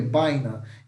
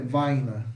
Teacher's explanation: Enquanto em espanhol é som de B, baina, em Guarani é som de V, vaina